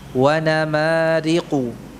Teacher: Gunnahnya ketika kita mengucapkan nama, ya, itu gunnahnya tidak tampak, artinya tidak panjang, tapi tetap ada gunnahnya, ya, dengan kadar yang ya sedikit, ya.